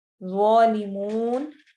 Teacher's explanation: واو مدہ اینڈ پر آنے کی وجہ سے یہ مد تھوڑی سی طویل ہو جاتی ہے، اس کو ہم تھوڑا سا زیادہ لمبا کریں گے